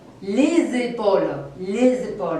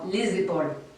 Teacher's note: il faut prononcer ce S final d'une façon très sonore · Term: liaison